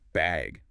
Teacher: do you need a bag or even just bag with a rising tone